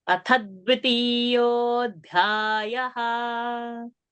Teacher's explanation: So that tha will have a pressure. So tha is a Dvitva, but tha is also a Mahaprana.